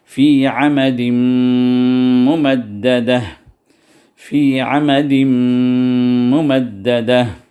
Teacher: پر بھی دیکھیے دال پہ عمدین پہ، دال پہ تنوین ہے، تنوین کے بعد میم آ گیا، تو یہ تنوین کا جو نون کا جو ساؤنڈ ہے وہ میم میں داخل ہو گیا · اس پر جو ہے میم پہ شدہ لکھا گیا، تو ادغام، نون کا ادغام ہو گیا میم کے اندر اور اس میں غنہ بھی پیدا ہو گیا ، تو غنہ کاملہ یہاں پر ہم کریں گے، فی عمد